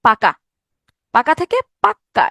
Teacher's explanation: এই ক ধ্বনিটা দুইবার উচ্চারিত হইলো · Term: ব্যঞ্জন দ্বিত্ব